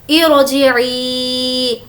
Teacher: را کو ہم یہاں پر موٹا پڑھ رہے ہیں، وہ اس لیے کہ یہاں پر زیر جو لگایا گیا ہے وہ عارضی ہے